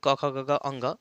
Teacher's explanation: क वर्ग यानी क ख ग अंग यह आपको जो है ना कंठ से छूते हुए आएगा।